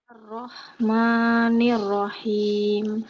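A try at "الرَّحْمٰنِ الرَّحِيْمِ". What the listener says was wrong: Ketika membaca huruf ronya harus tebal suaranya. Coba ikuti suara saya.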